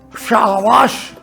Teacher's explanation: तालव्य श जो तालु से बोला जाए